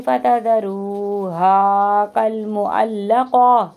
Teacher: गोलता को हा में बदल दीजिएगा